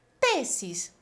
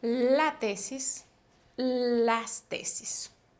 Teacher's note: Por ejemplo, tesis, si se dan cuenta termina en S, pero la mayor fuerza de voz no es en la última sílaba. Por lo tanto, esta palabra permanece invariable cuando va para el plural.